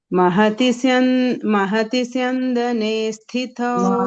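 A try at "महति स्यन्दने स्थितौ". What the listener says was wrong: Mahati syandane. One ditvam has to come.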